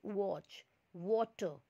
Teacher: व जिसमें आपके लिप्स गोल होते हैं वहाँ पे W जैसा सिंबल आएगा, और जो हिंदी वाला व है वहाँ पे V जैसा सिंबल आएगा। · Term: उर्दू वाला व